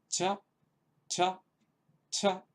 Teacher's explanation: Hay que procurar pronunciar esta H, esta aspiración posterior a la consonante. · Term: versión aspirada